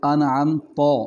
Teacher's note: جیسے کہ میں آپ کو مثال دیتا ہوں، لفظ انعمت، اور اس میں تا میں صفت استفعال ہے، اس کو یعنی باریک پڑھنا ہے۔ اگر اسی تا کو اگر ہم موٹا پڑھیں گے انعمت تو یہ تا کی جگہ پہ تو بن جائے گا، یعنی تے کی جگہ پہ توئے بن جائے گا، تو پھر یہ لفظ تبدیل ہو جائے گا۔